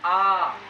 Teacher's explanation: और आ का भी उच्चारण कहाँ से होता है, कंठ से।